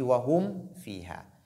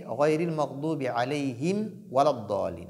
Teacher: Parce que waw et mim ont le même point d'articulation. Donc, tu fais beaucoup attention pour lire, pour clarifier mim. Sinon, mim va être dissoute quand waw vient.